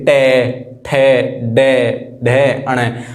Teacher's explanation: जीभ के जो पीछे वाला हिस्सा है वो ऊपर की साइड टच होगा हमारा, मूर्धन्य हो जाएगा। यानी कि बोल के देखो टे, हमारी जो जीभ है वो घूम के पीछे लगेगी, टे ठे, यानी कि जीभ जो है घूम के वो पीछे लग रही है।